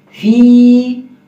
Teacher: فا کو پڑھتے وقت ہمارے اوپر والے دانت نیچے والے ہونٹوں کے ساتھ لگیں گے